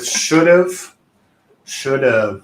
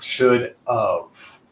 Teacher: you should feel a vibration because we're pronouncing the letter V it's not should of all